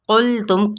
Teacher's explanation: قوف کو سخت پڑھتے ہوئے یعنی پر پڑھتے ہوئے لام کے ساتھ ملانا ہے، لیکن لام کو ہلانا نہیں